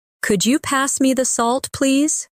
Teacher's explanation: my voice rises on could you and falls gently at the end